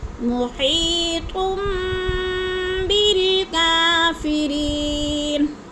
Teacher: تم پہ اخفاء شفی ہے، غنہ کریں گے، آواز کو ناک میں چھپا کر پڑھیں گے۔ · یا ساکن سے پہلے ہاں کے نیچے زیر ہے، تو یا مدہ اس کو بھی لمبا کرنا ہے